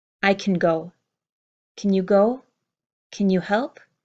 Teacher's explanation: My word of can, I don't hear the strong ah, I hear kin, kin.